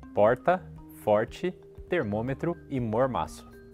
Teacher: A linguística chama esse som de aproximante retroflexo. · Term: R que a gente está acostumado a chamar de caipira